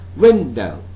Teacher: Since this is a noun, that's why we have to pronounce this word as window. So win is a stressed one, do is unstressed one.